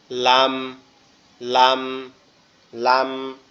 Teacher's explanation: আমাদের জিহ্বার আগা সামনের উপরের দাঁতের মাড়ির গোড়ার সঙ্গে লাগবে, সামনের উপরের দাঁতের মাড়ির গোড়ার সঙ্গে লাগবে, লাম, লাম, লাম।